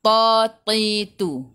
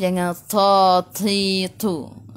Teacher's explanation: sifat huruf dia tebal, tak ada angin, bukan hamas